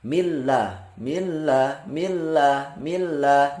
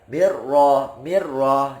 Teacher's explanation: idghamkanlah atau masukkanlah ketika bertemu dengan huruf lam ataupun huruf ra, la bi gunnatin lazim, tanpa adanya dengung. Jadi masuk, misal min ketemu la, millah, millah, millah, millah, nggak ada dengung.